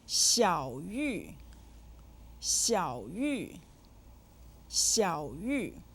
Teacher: said with the third and the fourth tones